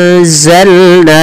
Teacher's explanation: samarkan suara nunnya kepada huruf Zai karena di sini ada bacaan Ikhfa